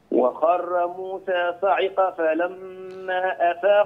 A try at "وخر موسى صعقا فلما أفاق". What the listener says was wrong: لا هنا قال لا تستعجل فيها يا أستاذ منذر لا تقول صعقا فلما هذه تنوين فلابد أن تخفيه عند القاف صعقا فلما عند الفاء